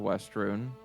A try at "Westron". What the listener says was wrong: Westron. Westron. You said Westrun.